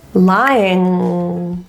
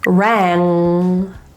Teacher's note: Notice for the N, my jaw tends to be closed and my mouth is a bit more closed because my tongue tip has to do the work. For NG, my mouth is slightly more open because mostly the back of my tongue is doing its job.